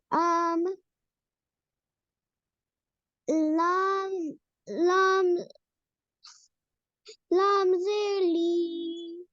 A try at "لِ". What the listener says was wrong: Simple harakat are short, not li. Lam, zer, li.